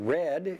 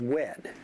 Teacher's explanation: a W for R substitution, where red is pronounced as wed